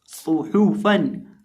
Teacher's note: सौद और हा के ऊपर पेश है और फा के ऊपर 2 ज़बर की तनवीन है। अब जब हम सौद और हा को पढ़ेंगे तो होंठों को गोल करके पढ़ेंगे।